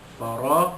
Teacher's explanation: ra alif di atas ra, ra tafkhim dibaca tebal, ra alif di atas ra mad asli.